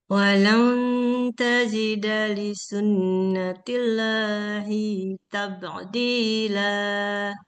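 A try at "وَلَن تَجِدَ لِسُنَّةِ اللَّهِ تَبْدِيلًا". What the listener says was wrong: Tabdila, jangan tabak. Jangan ada ainnya. Tabdila, jangan tabak. Dila. Tabdila.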